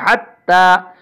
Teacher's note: اس تا پہ قلقلہ نہیں ہے، اس میں بہت احتیاط کرنی ہے، یہ تا جو ہے باریک پڑھا جائے گا